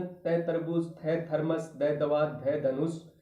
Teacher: यानी यह दंते व्यंजन हमारी जीभ का अगला भाग दांतों को छूता है इसलिए इसको दंते व्यंजन कहते हैं